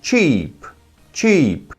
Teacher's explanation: para me falar o adjetivo barato, eu tenho que prolongar o som